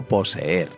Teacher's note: da igual que sean la misma letra Lo importante es que son dos vocales abiertas o fuertes y por tanto forman un hiato perteneciendo a sílabas distintas